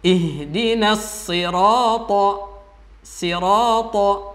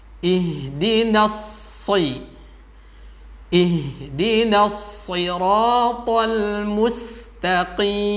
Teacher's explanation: Nanti terdengar ada shadnya tapi ada sinnya. Biar benar-benar murni shad, maka ditekan, khususnya ketika dia berharokat kasrah.